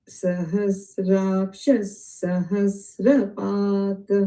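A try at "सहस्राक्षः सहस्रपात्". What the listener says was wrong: Wonderful.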